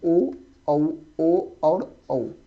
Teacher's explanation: कंठ मतलब गला और ओठ के मेल से आप जिसका उच्चारण कर पाओगे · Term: कंठ ओष्ठ